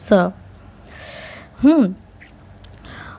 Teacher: और ये स आपका दंत स है, क्योंकि जब ये स बोलेंगे तो दांत हमारी जाके जीभ में टकराती है